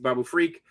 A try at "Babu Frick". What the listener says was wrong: Wait, Babu Frick, not Babu Freak.